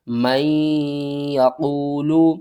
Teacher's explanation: میم کو ہم نے نون اور یا کے ساتھ ملا کر غنہ کرنا ہے، یہاں پر ہو رہا ہے ادغام مال غنہ۔